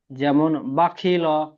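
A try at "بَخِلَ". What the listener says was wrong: বাকি ল নই, লাম জাবার লা হয়, বাখিলা।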